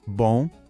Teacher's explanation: Esse som é nasal. Pensa assim, você vai falar bom, mas não feche a boca no final. Deixa o som sair pelo nariz.